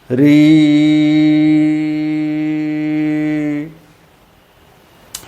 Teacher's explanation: आधार पर हम री का उच्चारण जब करते हैं तोरी यानी प्रारंभ में तो र सुनाई देता है लेकिन सतत उच्चारण करते जाते हैं तो हमें केवल ई की ध्वनि ही सुनाई देती है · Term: ऋ